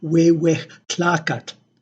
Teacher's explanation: That is because in the Huasteca dialect, the glottal stop is still present in a cognate form. It is no longer pronounced as a stop, as the but rather it is aspirated. It is a fricative, so it is pronounced more like the H of English and spelled with the J of Spanish.